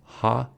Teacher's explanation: In ha, the glottal opening is narrow enough to create some turbulence in the airstream flowing past the vocal folds. For this reason, ha is classified as a glottal fricative.